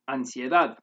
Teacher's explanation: it would be pronounced as ancient with a regular alveolar n